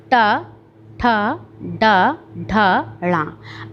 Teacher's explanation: आप इसे बोल के देखिए, जब आप मूर्धा मतलब जो इसके भी मुंह के अंदर जो तालु का जो आप प्रयोग कर रहे हैं, इसमें आपकी जीभ घूम जाती है, जीभ उलट जाती है इसको बोलने में।